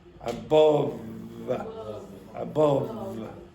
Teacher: So it's a labod dental sound. So you have to bite your bottom lip with your top teeth. Do not put your lips together. It is not bilabial. So you go like that and then release.